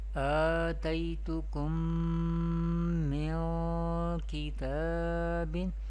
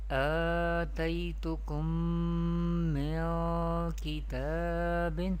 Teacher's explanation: We pronounce Idgham Shafawi with Gunna, and the duration of Gunna or the length of Gunna is equal to 1 alif.